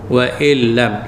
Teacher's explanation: Jadi kita masukkan nun mati ke dalam lam tanpa dengung. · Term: idgham bila ghunnah